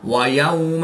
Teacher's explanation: واو ساکن سے پہلے یا پر زبر ہے تو واو لین، اس کو لمبا نہیں کریں گے